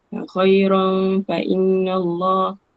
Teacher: tanwin bertemu dengan fa, kita kena jaga ikhfa kat situ, ada dengung.